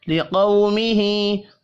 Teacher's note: قاف حروف مستعلیہ ہے، پر پڑھا جائے گا